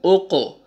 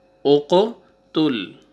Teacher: یہ قاف حروف قلقلہ میں سے ہے، ٹھیک ہے؟ تو ڈبل ساؤنڈ آئے گا۔ حمزہ ضمہ قاف سکون اوقو، تا ضمہ لام سکون تل، اوقو تل، اوقو تل۔